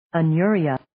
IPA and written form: ə'nʊriːə (Anuria)